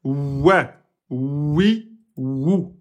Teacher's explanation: Et là, c'est lèvres et lèvres. Donc, pour le Waou, en arrondissant les lèvres vers l'avant et en élevant le fond de la langue.